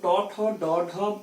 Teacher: এরপরে আমরা যদি দেখি ট বর্গ, ট, ঠ, ড, ঢ, মূর্ধন্য, এইগুলো যখন আমরা উচ্চারণ করছি মূর্ধা বা জিভটা মূর্ধায় অর্থাৎ মাঝের দিকে থেকে যাচ্ছে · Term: মূর্ধন্য বর্ণ